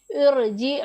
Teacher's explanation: रा साकिन है, उससे पहले वाले कलमे के नीचे ज़ेर आर्जी है तो हमने रा को पुर पढ़ना है।